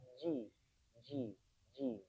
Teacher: jimnya ingat ditahan nafasnya jadi ji bukan lagi ci